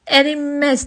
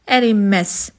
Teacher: ərinməz deyə tələffüz olunur. Yəni N da M səsini verir.